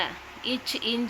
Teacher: இரண்டாவது நடுநா வந்து நடு அன்னத்தை பொருந்த இச் இஞ்ச் ஆகிய இரண்டும் பிறக்கும் நடுநா நடு அன்னத்தை பொருந்த பிறக்கும்